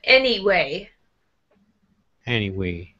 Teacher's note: it will help you with that word anyway if you make your voice go down a little bit. After any, not any way, but anyway.